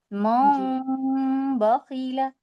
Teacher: फिर होठों को जोड़ देंगे नाक से आवाज आएगी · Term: इकलाब